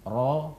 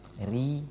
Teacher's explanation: dia ditebalkan dengan cara mengangkat pangkal lidah kita di dalam. Itu namanya sifat isti'la.